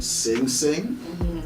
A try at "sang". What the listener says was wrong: Sang, you gotta say sang. You can't say sing. You can't say it like that.